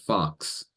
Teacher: that's a compound consonant it's like KS